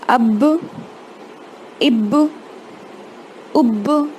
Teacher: با کو ساکن کی حالت میں پڑھنا ہے، لیکن جو با کا مخرج ہے وہ ٹکر کھا کے الگ ہوگا، مطلب اس کو تھوڑا سا پریشر دے کر جیسے باؤنس ہوتی نا آواز ویسے ہوگی، دوہری آواز نکلے گی. لیکن دوسری کو جیسے کہ با ساکن ہے تو اس کو زبر نہ دیں، اس کو فتحہ نہ لگائیں، جیسے اب اس طریقے سے نہ پڑھیں. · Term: قلقلہ